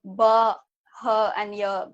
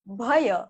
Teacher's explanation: Not really separate bahaya, but bhaya, more like a closed, combined word bhaya